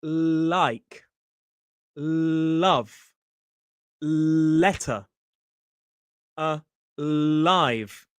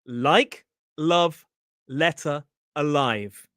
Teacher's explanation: To make this L sound, you put the tip of your tongue just up behind your top teeth on the alveolar ridge.